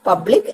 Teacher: the word public, the first syllable is the one which gets the stress